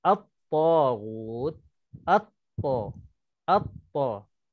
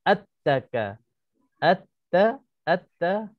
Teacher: Kita dah idghamkan, kita dah masukkan lam ke dalam huruf ta. Itu namanya idgham syamsi ataupun alif lam syamsiyah.